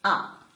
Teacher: it is a bit short and creaky so we call it the creaky tone